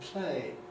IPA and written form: plₒeɪ (play)